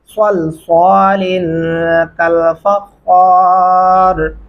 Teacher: स्वाद पढ़ते हुए होंठ गोल होते हैं